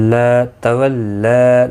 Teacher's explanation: لام کے اوپر کھڑی زبر ہے، ایک الف کی مقدار کے برابر کھینچ کر پڑھیں گے